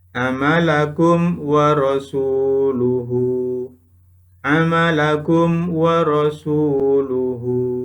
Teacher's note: bacaan izhar syafawi Bagaimana cara membacanya cara membaca bacaan izhar syafawi suara mim mati dibaca jelas dan bibir dalam keadaan tertutup atau terkatup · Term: idhar safawi